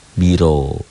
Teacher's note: Ro-nya tebal tafkhim karena baris di atas. Nih, baris di atas.